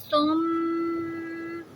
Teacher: اس کی آواز ناک میں رکھتے ہیں 2 حرکہ جتنی لمبی، اور اس کو مشدد بھی کہتے ہیں۔ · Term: غنہ